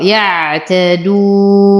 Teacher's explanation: أصبر على العين فهي من حروف لين عمر. يعتدون، نقف على النون بالسكون العارض وقبله حرف مد، فيتحول هذا المد إلى مد عارض للسكون، يمد بمقدار 2 4 6 حركات وقفا